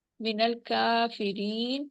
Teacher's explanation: کاف کے اوپر کھڑی زبر ہے، ٹو کاؤنٹ اسٹریچ کریں گے، یا مد ہو رہی ہے.